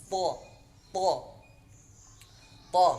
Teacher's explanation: Kalau tadi istifal pangkal lidahnya di bawah saja, kalau isti'la pangkal lidah itu naik ke langit-langit bagian atas. Bunyinya jadi tha. Jadi tebal ya. Tha. Makharijul hurufnya antara ujung lidah bertemu dengan tempat tumbuh gigi seri bagian atas. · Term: huruf isti'la